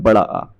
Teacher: विवृत स्वर दोस्तों जिसमें मुख द्वार पूरा खुल जाता है, इसमें आएगा आपका बड़ा आ।